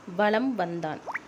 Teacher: மகர மெய்யெழுத்தை அடுத்து வகர எழுத்து வருவதால் மகர மெய்யானது தனக்குரிய அரை மாத்திரை அளவிலிருந்து குறைந்து கால் மாத்திரை அளவாக ஒலிக்கிறது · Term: மகரக் குறுக்கம்